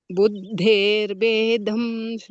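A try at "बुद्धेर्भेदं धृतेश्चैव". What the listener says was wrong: ಧಮ್ ನೋಡಿ ಅಲ್ಲಿ ದಕ್ಕೆ ಮಹಾಪ್ರಾಣ ಇದೆಯಾ? ಇಲ್ಲ.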